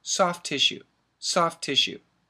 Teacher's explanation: two words but when we say it fast we don't say soft to tissue we say soft tissue